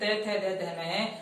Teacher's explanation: कहने का मतलब यह है कि हमारी जो जीभ है, इस तय वर्ग का उच्चारण जब हम करते हैं, यानी 5 वर्णों का उच्चारण करते हैं, तय, थ, द, ध, न, तब हमारी जीभ जो है वो दांतों को स्पर्श करती है। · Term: दंत्य वर्ण